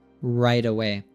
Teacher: And then also the right. So the T there comes before a vowel sound in a way. So even though it's in a different word, it also becomes an American T.